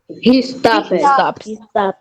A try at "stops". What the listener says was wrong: Não estou entendendo o final. Como é he stops, né? Stops. O S é só um chiadinho.